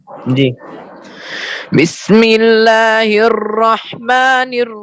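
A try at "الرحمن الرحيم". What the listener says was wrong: نہیں یہ را پر ہے، ہر یہ نہیں کریں، یہ را پر ہے. الرحمن، زبان کو ڈھیلا رکھیں.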